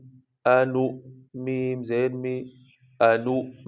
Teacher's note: Shape تو واو کی ہے، لکھنے میں تو واو ہے، لیکن یہ آواز اور کردار سارا جو اس کا مخرج ہے وہ حمزہ کا استعمال ہوگا۔